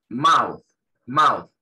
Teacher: Esa TH al final suena como una Z. Muy, pero muy suave. Que nosotros no tenemos ese sonido en español.